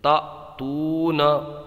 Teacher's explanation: حمزہ ساکنہ کو جھٹکا دے کے پڑھیں گے اور یہاں پر واو میں مدہ ہوگا، کھینچ کے پڑھیں گے